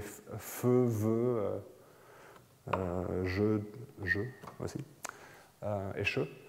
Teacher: Donc les fricatives, c'est feu, veut, je aussi, et che. Donc ça, c'est les consonnes qui ne claquent pas.